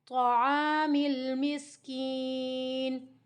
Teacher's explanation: اب اس کو ایسے نہیں کہنا تو عامل، تو جب تو کریں گے نا، اگر ہونٹوں کو تھوڑا سا گول کریں گے تو یہاں پر تے کے اوپر، تو کے اوپر پیش کی آواز آئے گی، ٹھیک ہے، اس کا بھی خیال کرنا ہے آپ نے۔ تو منہ کو کمپلیٹ کھولنا ہے، موٹا بھی پڑھنا ہے، تا کی آواز نہ آئے اور تو کی آواز بھی نہ آئے۔